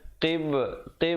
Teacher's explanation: qib ada qalqalah di situ, qalqalah sughra, ba bertanda mati.